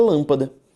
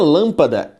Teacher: Na palavra lâmpada, eu tenho uma palavra proparoxítona, porque a sílaba tônica é a antepenúltima.